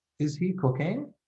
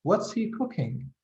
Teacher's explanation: when you say is he cooking like you go up in the end this is a raising intonation but when you say what's he cooking you go down in the end this is what we call a falling intonation so if you